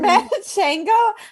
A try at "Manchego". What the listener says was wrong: Where are you getting these vowels from? It's Manchego. No, you always do that. You really like vowels. You just love throwing vowels around.